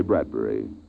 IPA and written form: ˈbrædbɛri (Bradbury)